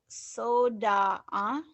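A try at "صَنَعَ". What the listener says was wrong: Sona, sona'a. sona ini bukan dal ya, sona'a.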